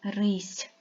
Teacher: це буля наголошеним є другий склад останній звук у слові рись звук с який він м'який глухий приголосний